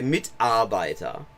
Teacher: the letter R at the end of a word is pronounced like a reduced a sound